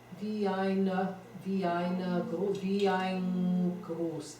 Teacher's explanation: There need be no N there. It can all be NG.